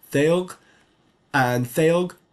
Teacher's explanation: that's a laminal dental fricative